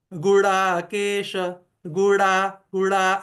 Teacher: मूर्धन्य ही ड आना चाहिए जो प्यरेस्ट फॉर्म है वही आना चाहिए तो गुड़ा केश तो जो मूर्धन्य पोरेस्ट साउंड है वो आना चाहिए।